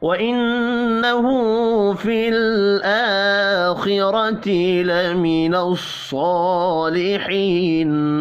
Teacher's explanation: نون مشدد پر غنہ کریں گے، ہا کے اوپر الٹا پیش ہے، ایک الف کے برابر کھینچ کر پڑھنا ہے۔